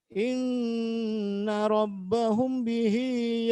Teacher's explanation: ketika ada mim sukun bertemu dengan huruf ba itu pasti dibaca mendengung